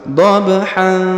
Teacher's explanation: Kalau kita sambung dhabhan, didengungkan dan disamarkan ya. Karena ini kena hukum dengung dan samar, namanya ikhwa ya.